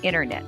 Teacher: it depends rule number three t is silent after an n the t after an n is often silent in american pronunciation